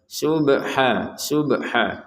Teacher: Subhanaka untuk bnya kita pantulkan ya.